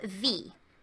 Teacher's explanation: whenever you have a W in German, that makes a V sound